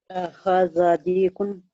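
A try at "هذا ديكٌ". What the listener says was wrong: बहुत अच्छा, बहुत अच्छा, बहुत अच्छा।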